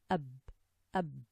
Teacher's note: Pressing the 2 lips together and releasing them produces the letter ba.